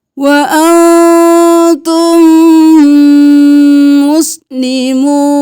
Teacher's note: मीम के साथ जब भी मीम मिल जाएगा तो यहाँ पे भी गुन्ना होगा